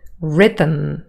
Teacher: again the second syllable here the um forms a syllabic consonant